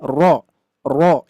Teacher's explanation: Jadi ada pengulangan di lidah kita. Ro ro ro. Nah cuman pengulangannya tidak tidak berlebihan · Nah, cuman pengulangannya tidak berlebihan, tidak ro gitu ya. Hanya satu kali getaran saja. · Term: takrir, Takrir